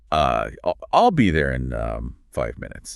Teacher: Now, nervous, maybe hesitant, voice a bit shaky.